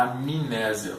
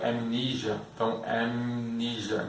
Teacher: Na verdade, até em alguns casos de outras consoantes, por exemplo, no caso do amnésia, nós acabamos até adicionando uma vogal que não existe, né? A gente fala amnésia, porque não tem I, né? · do M já vai direto para o N